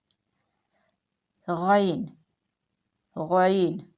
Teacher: عین، حلق کا درمیانی حصہ استعمال میں آئے گا اور اس کی ادائیگی میں حمزہ کی آواز نہیں آنی چاہیے، یہ عین، عین، عین کی ادائیگی سے پڑھا جائے گا۔ غین، غین، حلق کے اس حصہ سے ادا کیا جاتا ہے جو منہ کی طرف ہے، یعنی منہ کی طرف کا جو حصہ ہے وہ حصہ غین کی ادائیگی میں استعمال ہوگا۔